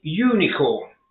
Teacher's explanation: notice that unicorn sounds like it starts with a y